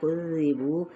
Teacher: واو ہونٹوں کے نا تمام گلائی کے ساتھ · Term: واو مدہ